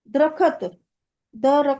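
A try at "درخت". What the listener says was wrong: दरख्त, दरख्त यानी कि पेड़ को बोलते हैं, ट्री को बोलते हैं दरख्त, पर उर्दू वर्ड है दरख्त। दरख्त नहीं पढ़ेंगे, दाल रे, दाल के ऊपर जबर, रे के ऊपर जबर, और खे में जज।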